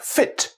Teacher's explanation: in the doric variety of scots spoken in the northeast this is pronounced with an f sound